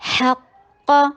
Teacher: ہا میں ہمس دیجیے اور قاف کے اوپر قاف کو ہیوی کیجیے